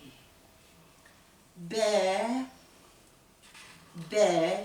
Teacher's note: dudak içlerinin birbirine kuvvetle kapanmasıyla B harfi çıkar. Dudak uçlarına yakın.